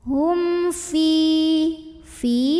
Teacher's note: Hum, ada idhar syafawi karena ada mim sukun yang ketemu sama huruf fa. Maka mim sukun ini dibunyikan dengan jelas, bunyi dan tidak ditahan.